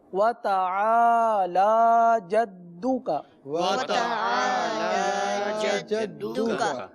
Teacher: تو لام پر کھڑا زبر ہے, لام کو کھینچ کے پڑھیں گے